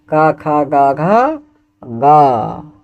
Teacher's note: कवर्ग के जितने भी वर्ण हैं उन सभी का उच्चारण जो होता है वो होता है कंठ से